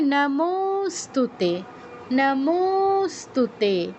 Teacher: নমস্তুতে নমস্তুতে এরকম তে দীর্ঘ হবে।